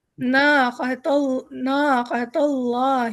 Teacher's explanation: اللہ حروف جلالہ ہے، موٹا ہو جائے گا